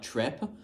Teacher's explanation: This person has a really high trap vowel, kind of sounds more like trep